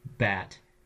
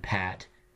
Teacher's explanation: the change is very small between a B and a P. By now you know those as bilabial stops, the voiced and the unvoiced.